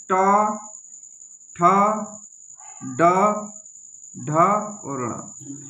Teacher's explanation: और ये जो है ना ये मूर्धा से बोले जाते हैं। जब ट वर्ग मूर्धा से बोला जाता है